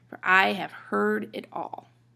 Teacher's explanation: Now listen to for, have, and it. Those are unstressed. You say them kind of quickly.